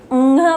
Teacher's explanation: उसी प्रकार चवर्ग, टवर्ग, तवर्ग और पवर्ग, इन सब वर्गों का जो 5वां अक्षर होता है अंघ, य, ण, न, म, इनकी जो ध्वनि होती है वो नाक से निकलती है, इसीलिए इन्हें नासिकीय व्यंजन कहा जाता है। हम जब ङ बोलते हैं तो मेरा नाक से ध्वनि निकल रही है